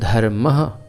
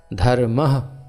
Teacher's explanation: जैसे धर्म के आगे दो बिंदी लगेंगी तो उनको बोलेंगे धर्मः। हल्का सा ह की ध्वनि वायु को बाहर की तरफ धकेला जाएगा, हल्का सा धर्मः, हल्का सा हकार आएगा, इसको विसर्ग कहते हैं।